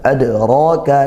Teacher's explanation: ada dal sukun, dipantulkan qalqalah sughra karena dalnya sukun di tengah kalimat